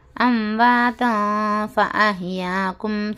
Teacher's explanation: اور کیا ہے، تنوین کے بعد فا والا لیٹر آیا یعنی اخوا کرنا ہے، اس میں فا اخوا والا لیٹر ہونے کی وجہ سے ہم نو کی زبان کو تالو سے ہٹا کر نون کی آواز کو ناک میں چھپا کر گنہ کے ساتھ اخوا کرنا ہے. اس کو نون کی آواز ناک میں چھپا کر پڑھنا چاہیے